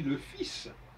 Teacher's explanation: Alors le fils, on ne prononce pas le L dans fils, alors qu'on l'écrit.